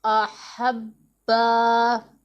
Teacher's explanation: با حروف قلقلہ میں سے ہے اور مشدد ہے، اسے ہم نے خوب جماؤ کے ساتھ پڑھنا ہے